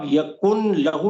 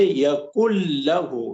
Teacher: نون جو ہے یہ گرامیٹیکلی لکھا ہوا ہوگا لیکن اسے پڑھا نہیں جائے گا. اس کو آپ یکن لہو نہیں پڑھیں گے، لکھیں گے ضرور چونکہ گرامیٹیکل لکھنا ضروری ہے، لیکن پڑھیں گے یکل لہو. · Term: ادغام